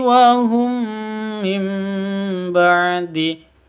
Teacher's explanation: gunah musyaddadah lagi tapi bacaan Idgham Mimi atau idgham mis mislain cara bacanya sama seperti ghunah musyaddadah dengung dua ketuk